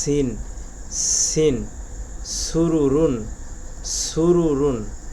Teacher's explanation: সিন পেশ সু, র পেশ রু, সুরু, র দুই পেশ রুন, সুরুরুন। অবশ্যই সিন উচ্চারণ করার সময় আমাদের মুখের বাতাস জারি থাকতে হবে, অর্থাৎ চালু থাকতে হবে।